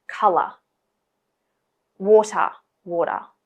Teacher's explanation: when you have the ER or OR spelling, we tend to add a schwa sound on the end.